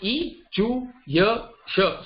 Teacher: This Sthana is Talu. Talu is the palate.